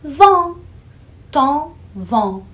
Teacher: O tom e o vão têm a mesma vogal nasal.